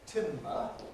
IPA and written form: ˈtɪmbə (timber)